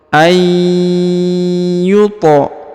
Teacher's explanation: ya dan huruf nunnya menghilang atau melebur ya a a kemudian huruf tho berharakat ee sukun ya maka dia dipantulkan atau diqalqolahkan ya dibaca dengan pantul